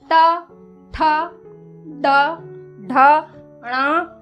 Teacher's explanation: जीभ को उलटकर मूर्धा को छूते हैं उसी जगह को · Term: मूर्धन्य ध्वनियाँ